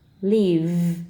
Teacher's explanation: Keep the voicing going throughout the whole word and voice the V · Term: voiced V